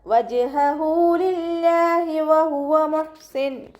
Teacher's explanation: ജീമ് കൽക്കല letter ആയതുകൊണ്ട് full സുക്കൂന് കൊടുക്കുക